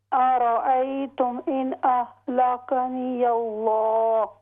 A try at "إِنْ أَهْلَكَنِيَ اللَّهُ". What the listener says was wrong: ہاں جی ہا کو ظاہر کریں. ان اہلکنی اللہ.